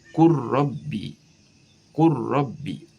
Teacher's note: tulisannya qul rabbi dibaca menjadi qur rabbi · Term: idgham kamil